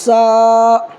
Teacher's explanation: یہ دیکھو یہ چھوٹی سین ہے اور یہ بڑی شین ہے، تو چھوٹی سین اور بڑی شین میں فرق ہونا چاہیے۔ چھوٹی سین جو نکالیں گے تو سیٹی مار کے نکالیں گے